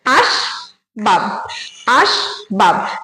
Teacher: স্বরধ্বনি উচ্চারণ হচ্ছে না সুতরাং এটা কিন্তু রুদ্ধ দল আর এখানে বাব যখন বলছি তখনও ব এর সঙ্গে কোন স্বরধ্বনি উচ্চারণ হচ্ছে না তাহলে এখানে দুটো দল আছে দুটো দলই কিন্তু রুদ্ধ দল এটা